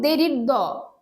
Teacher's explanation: ত থ দ ধ দ ঘোষ অল্পপ্রাণ ধ্বনি